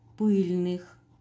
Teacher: прилагательное ударение падает на первый слог